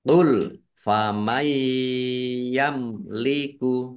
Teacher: qul famay yamliku nun sukun bertemu dengan huruf ya idgham bi ghunah idgham masuk bi dengan ghunah mendengung masuk dengan mendengung ya mendengung ya ditahan biar tampak dengungannya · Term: Idgham bi gunnah